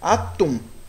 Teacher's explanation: é ela é oxítona porque a sílaba mais forte é a última sílaba da palavra